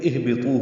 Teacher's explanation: یہاں سے شروع کریں گے تو اہبطوا ہوگا، حمزہ کو ہا سے ملائیں گے، حمزہ اقصی حلق سے ہا اقصی حلق سے دونوں ادا ہوتے ہیں، اور ہا ساکن ہے، اس پہ ہمس ہوگا، طا پر پڑھیں گے اور اس کو 2 حرکات لمبا کریں گے.